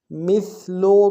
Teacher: میم کو سا کے ساتھ ملانا ہے، سا کو باریک ادا کریں گے